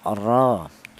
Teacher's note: ro yang berharakat fatkhah dibaca tafhim atau dibaca tebal